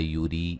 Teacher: یوری را کو باریک پڑھیں گے